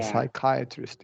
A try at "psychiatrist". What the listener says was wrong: And now you release this T, right? You release that, which is, it's so difficult to remember that stop T. I pointed out, but I don't hold you to it.